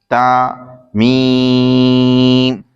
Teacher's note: تا زبان کی نوک اور اوپر کے دانتوں کی جڑ سے ادا ہوتا ہے اور میم دونوں ہونٹوں کے خشک حصے سے ادا ہوتا ہے